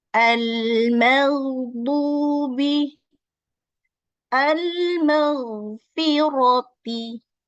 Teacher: Tidak boleh atau terbawa tipis maghdubi, ya, itu keliru lagi ghainnya ya. Jadi ma-nya tipis, ghainnya tebal.